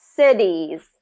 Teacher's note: what's tricky about this one is you have the s and the z and then you have the short i and the long e